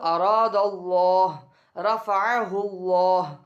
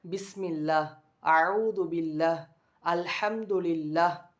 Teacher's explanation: அங்கே சொல்லும் பொழுது அராதல்லாஹ் ரஃபஅஹுல்லாஹ் அப்படி சொல்லி அல்லாஹ்ங்கிற வார்த்தையை மோட்டா வல்லினமாக சொன்னோம். ஆனால் இங்கே பாருங்கள், பிஸ்மில்லா அஊது பில்லாஹ் அல்ஹம்துலில்லாஹ் ரொம்ப மெல்லினமாக சொல்கிறோம்.